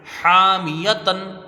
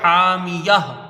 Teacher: تا مدورہ ہا ساکنہ سے بدل جائے گی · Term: وقف بالابدال